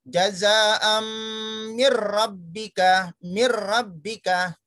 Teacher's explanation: Di sini tetap ada kata-kata idgham, meleburkan, memasukkan, tapi ada kelainan yaitu bila gunnah, tidak didengung. Hanya cukup dengan satu ketuk. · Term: idgham bila gunnah